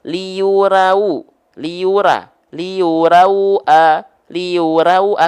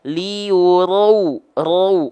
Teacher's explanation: karena huruf ro ketika berharakat baris atas dia mesti dibaca dengan mufakhamah dibaca dengan tafkhim dia dibaca dengan tebal